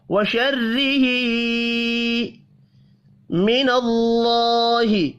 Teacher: اللہ کا نام زبر کی وجہ سے پر پڑھا جائے گا